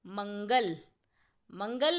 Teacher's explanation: मंगल में म के बाद अंग की आवाज़ आ रही है, इसीलिए म पर बिंदु लगाकर हम लिखेंगे मंगल।